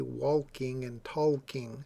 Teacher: I know a lot of people who would say walking and talking. They would pronounce the L. That is not considered standard American English.